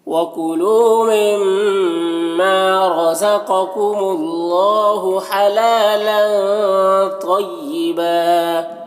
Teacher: مما میم مشدد غنہ کے ساتھ پڑھیں گے · لام کے تنوین میں اخفا ہو رہا، تنوین کی آواز کو ناک میں چھپا کر پڑھیں گے